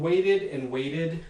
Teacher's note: another process that affects some of these stems in english namely flapping which turns either ta or da into this so-called ballistic tap when it's in between two vowels the second of which is unstressed